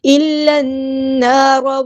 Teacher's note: کے ساتھ ملا دینا، حمزۃ الوصل ہمارا ڈراپ ہو جائے گا، لام یہاں پہ لام شمسی ہے، اس کو ہم ظاہر نہیں کریں گے ، الف مد آیا تو مد اصلی کریں گے، اور نون · لام کو ہم نے نون کے ساتھ ملا دینا، حمزۃ الوصل ہمارا ڈراپ ہو جائے گا